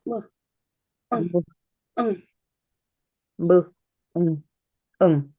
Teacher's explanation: 성대가 떨리죠. 그래서 네이절 사운드는 세 개 다 유성음이다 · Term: 비음성 네이절 사운드